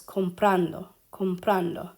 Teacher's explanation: When we look at comprando here, comprando, it ends in an O. Our stress is on the second to last syllable where it's supposed to be, okay? So it ends in a vowel, second to last is where it should be, second to last is where it is.